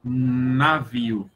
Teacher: quando você vai pronunciar a consoante ne, a sua língua vai tocar nos dentes ou nos alvéolos